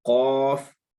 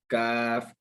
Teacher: क़ाफ़ जो है वो मोटा अदा होना है, लेकिन काफ ये वाला बिल्कुल नॉर्मल अदा करना है